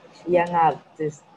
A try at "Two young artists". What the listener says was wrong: No, there is no gap between young and artist. You have to say it quickly without break. Young artist. Young artist. Say it like that. Young artist.